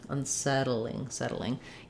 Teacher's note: you can say unsettling suchling but that sounds more british so in settling it's like the word saddle where we have the flap